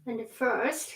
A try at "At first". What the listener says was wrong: At first, not and.